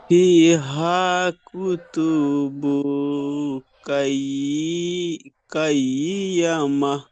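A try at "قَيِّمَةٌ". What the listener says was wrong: কয়িমাহ, কয়িমাহ, কয়িয়া হবে না, কয়িমাহ। কুতুবুন কয়িমাহ বলেন।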